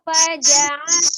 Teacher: Faja'alu yang kerasa memang dari tenggorokan bagian tengahnya, beda dengan kalau alifnya kan faja'a, gitu kan diturunkan. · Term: ain